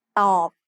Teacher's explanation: ต อ บ follows the same tone rule we just learned. Middle class consonants with a dead syllable form a low tone.